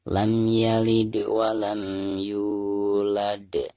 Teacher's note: ketika kita membaca yu, maka di sini harus dipanjangkan 2 harokat karena dihukumi mad tabi'i